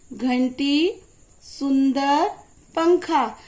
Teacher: जब कोई भी शब्द हम अंग की बिंदी लगाकर लिखते हैं तो उसे अनुस्वार कहते हैं। इसे बोलने में नाक से ध्वनि निकलती है।